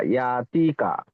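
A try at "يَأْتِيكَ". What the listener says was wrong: তিটা টান আছে, এখানে ইয়া মাদ্দা আছে, তাহলে ইয়া তি কিয়া।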